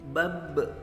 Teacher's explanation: Ada pantulan teman-teman di situ, bab, karena huruf qalqalah di situ, maka kita pantulkan.